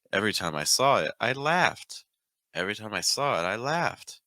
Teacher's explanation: a very common rhythm that you're going to find in American English, this shifting between pitches downward.